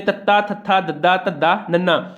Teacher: ਸਾਡੀ ਜੀਭ ਹੈ ਜਿਹੜੀ ਦੰਦਾਂ ਨਾਲ ਛੂੰਹਦੀ ਹੈ, ਇਸ ਕਰਕੇ ਇਹਨੂੰ ਦੰਤੀ ਧੁਨੀਆਂ ਕਿਹਾ ਜਾਂਦਾ ਹੈ।